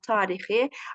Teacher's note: Tarixidə yenə birinci hecamızda uzanma var, tarixi. Amma haradakı ən leksik şəkilçisi burada daxil olur, zərf düzəldən.